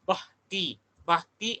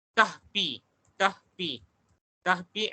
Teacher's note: konsonan yang dihembuskan, yang dihembuskan atau dieja, dengan aspirasi